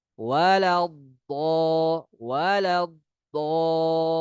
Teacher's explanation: Ada rokhawah, aliran suara di huruf dot ketika dia mati.